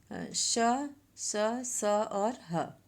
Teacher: घर्षण अर्थात रगड़ के कारण उच्चारण होने के कारण इन्हें ऊष्म व्यंजन कहते हैं।